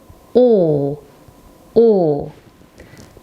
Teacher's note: As you can see, o, like its visual representation of the character itself, it is a very smaller O that I'm making with my mouth, and it's shorter. So we say O, O.